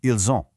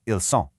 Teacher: Because of that liaison we talked about, the S in ils connects with the O in on to make a soft Z sound